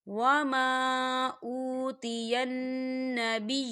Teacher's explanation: خالی الف سے پہلے زبر ہے اور اس پہ چھوٹی سی مد بھی ہے، تو ہم اسے 4 حرکت کی برابر کھینچیں گے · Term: الف مدہ